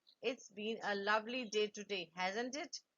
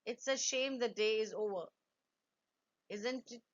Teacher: use a falling intonation in the tag. You are simply seeking agreement.